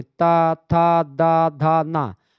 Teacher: आपकी जो जीभ है वो दांत में जाकर के टच करती है, तो दंत व्यंजन है ये